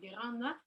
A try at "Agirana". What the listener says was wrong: Agirana, there's a na missing.